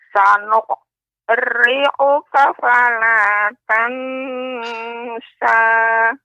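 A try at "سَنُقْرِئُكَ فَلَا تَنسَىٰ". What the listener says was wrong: Perhatikan Nek ketika membaca sanuqu ya, bukan sanuq. Sanuqri'uka. Sanuqri'uka. Kemudian fala tansa ikhfa ya tansa dia pengucapannya samar, lidah berada di tengah-tengah, lidah tidak nempel ke langit-langit, bukan tansa, ini kurang tepat. Tansa, tansa.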